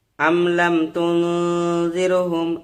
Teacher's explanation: কেননা মিম সাকিনের পর এখানে লাম এসেছে, এই জন্য ইজহার করে পড়বো মিমটাকে, মানে বিনা গুণায় তাড়াতাড়ি পড়বো